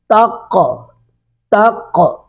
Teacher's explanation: قاف کی آواز لوٹ کے آ رہی ہے